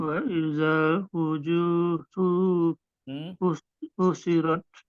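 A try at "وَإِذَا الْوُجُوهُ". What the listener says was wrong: Itu nggak ada titiknya, Dok. Ini nggak ada titiknya. Kalau ada titiknya, jim. Kalau nggak ada titiknya apa? Ya, ya, ha.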